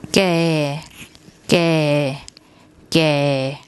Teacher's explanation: that's the tone rule for a mid-class consonant, and the first tone mark is a low sound.